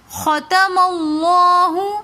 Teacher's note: لفظ اللہ سے پہلے زبر آ رہا ہے تو اس لیے ہم نے لفظ اللہ کو موٹا پڑھا